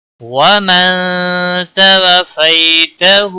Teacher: نون ساکن کے بعد حروف اخفا کا حرف آیا ہے، اخفا حقیقی ہوگا. وتوفیته وفی یا لین ہے، تھوڑا نرمی کے ساتھ کھینچ کر پڑھیں گے.